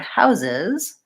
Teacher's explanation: in the word houses, my S's turn to Z sounds